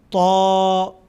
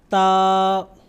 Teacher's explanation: اب طا اور تا، اس میں بھی میں نے شروعات میں بتایا تھا کہ طا پر ادا کیا جاتا ہے اور تا باریک